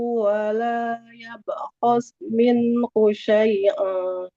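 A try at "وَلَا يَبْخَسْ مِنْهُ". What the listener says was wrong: Nah, sinnya harus sempurna dulu.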